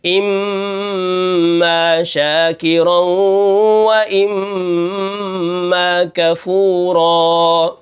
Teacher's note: جیسے ہی تشدید ہوگی میم کے اوپر تو مطلقاً ہر حال میں آواز کو ناک میں لے جائیں گے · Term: غنہ